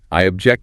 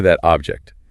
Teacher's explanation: Notice that quick glide over the OB in the verb versus that sharp hit on OB in the noun.